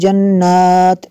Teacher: یہاں پہ اگر وقف کریں گے تو یہاں پہ جنات اس کو پڑھیں گے، تا کو جو ہے ساکن کر دیں گے، اور یہاں پہ اگر ملا کے پڑھیں گے تو تنوین کے بعد یا ہے حروف یرمالون میں سے، تو یہاں پہ تا کو یا کے ساتھ ملانا ہے۔